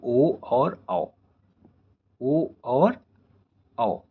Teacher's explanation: ओ का उच्चारण भी गले और ओठों से होता है और ओ का उच्चारण भी गले और ओठों से होता है। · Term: कंठोष्ठ्यो वर्ण